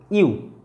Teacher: যুগ্ম টাইপের ভাওয়েল উচ্চারণ চলে এলো, ইউ, যেমন ই আর উ দুটো পাঞ্চড হয়ে এলো ইউ, এরকম যে উচ্চারণ দিয়ে সেগুলো তারা কিন্তু তাদের আগে অ্যান বসবে না, কারণ তারা সম্পূর্ণরূপে ভাওয়েল উচ্চারণ নয়, যুগ্ম ভাওয়েল দিয়ে আসছে।